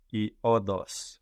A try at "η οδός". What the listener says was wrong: Η οδός, with the accent on the end, η οδός.